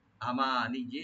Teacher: ওয়ালা আমানিজি, আমানিজি, এখানে হামজার উপর টান হবে না, মিমে টান হবে। আর ইয়াকে ডাবল করে পড়তে হবে একটু টান ছাড়া।